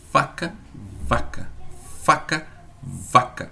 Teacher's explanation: O ponto de articulação é o mesmo, né? É lábio e dente.